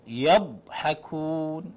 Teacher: the dad with sukun, don't give it qalqala.